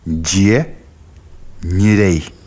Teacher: Буквы «дь» и «нь» обозначают мягкие согласные «д» и «н»